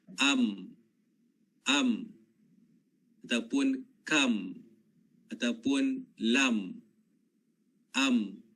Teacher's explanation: Kemudian yang kedua adalah Ya, huruf mim ni dia punya makhraj yang kedua adalah keluar melalui hidung. Bila kita tutup bibir, itu sifatnya syiddah. Tertahan suara. Tertahan kan? Ya. Tetapi dia mengalir melalui hidung.